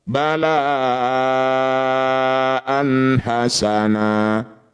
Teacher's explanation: Disebut bacaan mad wajib muttasil. Cara bacanya la yang bertanda layar dipanjangkan 6 harokat.